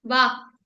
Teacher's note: क का साउंड आ रहा था कंठ से तो हमने कंठ पे ही रोक दिया उसको वायु को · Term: हलंत